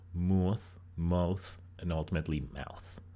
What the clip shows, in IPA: mʊθ mʌuθ